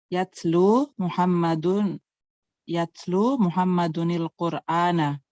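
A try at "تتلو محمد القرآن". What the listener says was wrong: Kalau bukan Quran tidak perlu dikasih nun, langsung Muhammadul Qur'ana karena ini bukan Quran.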